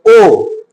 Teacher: जैसे ही ओ बोले तो इसमें हमें कंठ का और ओठ का दोनों का प्रयोग किए हैं।